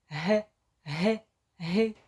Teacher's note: спробуємо його вимовити дивимося робимо гірку язичком г г г так це приголосний звук він дзвінки та твердий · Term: звук Г